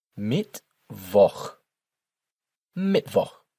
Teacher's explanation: the CH sound here is a more throaty sound in German, and as always, the W is pronounced like a V